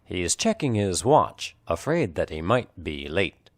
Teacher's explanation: the strong content words are check and watch that lightly pronounced words are he's and his he is the · He is the first word of this sentence, so the H is clearly pronounced, but the H of his is silent or unpronounced.